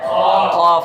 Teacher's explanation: काफ को, काफ हुरूफ़ मुस्तालिया में से है और काफ का मखरज है ज़बान की जड़ और तालु का नरम हिस्सा। ज़बान की जड़ और तालु का नरम हिस्सा, जो ज़बान बिल्कुल आखिर में जड़ है उसको, जो उसके ऊपर तालु है नरम गीला गीला जो रहता है कौवे के बराबर में, वहाँ से जब हम ज़बान की जड़ को लगाते हैं तो हमारा कौफ अदा होता है।